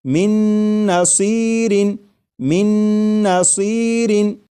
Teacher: اور میم کے بعد نون مشدد جو ہے اس کی آواز آئے گی اور غنہ کے ساتھ پڑھیں گے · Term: ادغام